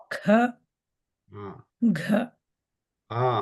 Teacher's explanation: So we are putting more stress. So Mahapranaha, we have to give more air out of our mouth.